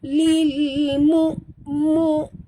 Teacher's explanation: Di sini hamzah sahabat. Jaga-jaga, jangan bunyikan ain.